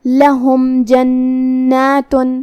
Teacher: آخری میں میم پہ جزم ہے، یہاں میم کا حکم ہے اظہار شفوی کیونکہ اس کے بعد حرف الجیم ہے. یہاں ہم میم کو ظاہر کریں گے اور بغیر غنہ سے یہ حکم کو ادا کریں گے · ہا کی ادائیگی حلق کے نیچے والے حصے سے ہے، ہم ہا کو وہیں سے پڑھیں گے. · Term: حرف الہا